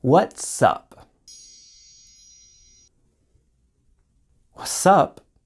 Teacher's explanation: Notice with what's up, the T sound disappeared completely.